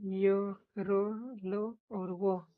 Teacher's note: अप अंत व्यंजन इन इनका उच्चारण स्वर और व्यंजन के बीच होता है। बोलते समय जीभ मुंह के किसी भाग को पूरी तरह नहीं छूती।